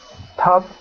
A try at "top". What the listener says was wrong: When you were reading, I heard O, so make sure it's more like top, like ah, top.